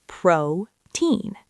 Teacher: We continue with protein, placing the stress on the first syllable, protein.